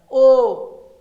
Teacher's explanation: इनको बोलिएगा तो कंठ और ओठ दोनों का इस्तेमाल होगा ज्यादा मात्रा में